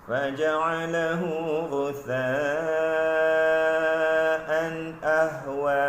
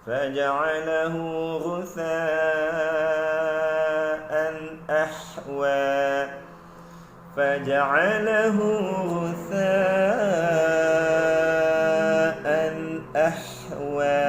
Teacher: hamzah baris atas bunyi a bergabung bunyi dengan ha pedas berbaris sukun ataupun mati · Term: ha pedas yang sukun